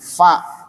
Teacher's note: Fa dari dalam bibir bagian tengah dengan gigi seri tengah bagian atas.